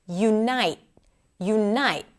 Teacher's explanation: And the U is a secondary stress. It is lower and it is shorter.